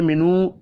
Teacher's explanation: اب یہاں پر حمزہ ہے، آگے منو واو مدہ ہے، ایک الف کے برابر کھینچ کر پڑھیں گے